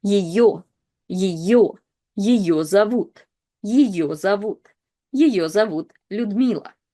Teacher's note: the first ye is not stressed and again is reduced to this kind of like yi sound